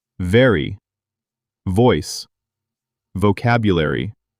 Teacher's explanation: V. Your upper teeth touch your lower lip and vibrate.